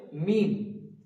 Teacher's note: একদম সহজ। দুটোটি ঠুট যেমন আমরা প্রথমে বা বলেছিলাম ঠিক তেমনি দুটো ঠোট একসঙ্গে মিলিত হয়ে উচ্চারিত হবে মিম।